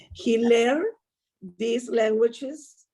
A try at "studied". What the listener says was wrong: But just remember, sometimes the D, I can't hear the D at the end of the verb. So he studied. Yeah, sometimes it sounds like he studied. He studied. Strong D at the end.